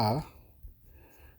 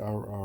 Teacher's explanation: learned that the r syllable is not pronounced like r r it's pronounced like a half roll for a Spanish r with your tip of your tongue on top of the roof of your mouth and back of your teeth and as you breathe out and in h like this and